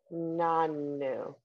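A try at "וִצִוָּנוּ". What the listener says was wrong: Don't forget that vav doesn't have the bottom. It's as skinny as the nun, but it didn't have the bottom. The bottom belongs to that vowel. Don't, you see there's a space between that.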